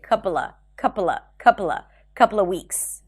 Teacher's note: in this case, you can even drop the v sound and just say couple of weeks